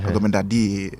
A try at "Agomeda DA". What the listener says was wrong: The way you are saying is like you are singing a song. Agomeda DA. Agomeda DA.